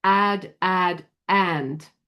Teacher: The thing that's different with the short a sound is that we nasalize this sound when it's got a nasal sound after it. We when we have the word a d, we don't say it the same as we say add.